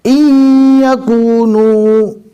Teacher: جزم والے نون کو نہیں پڑھا جائے گا، الف کے زیر یعنی اس کو حمزہ کہا جاتا ہے، اس کو ڈائریکٹ یا جو تشدید والا ہے اس سے ملانا ہے۔